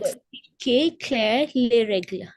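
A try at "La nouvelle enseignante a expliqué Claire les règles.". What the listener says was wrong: Very nice. Very good. Superb.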